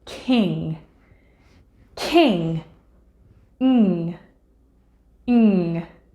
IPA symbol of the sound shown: ŋ